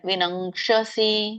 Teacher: ಅಥ ಚೇತ್ ತ್ವಮಹಂಕಾರಾತ್ ನ ಶ್ರೋಷ್ಯಸಿ ವಿನಂಕ್ಷಸಿ. ವಿನಂಗ್ ಕ ಇರೋದ್ರಿಂದ ಅಲ್ಲಿ ಕ ವರ್ಗದ ಅನುನಾಸಿಕ ಬರುತ್ತೆ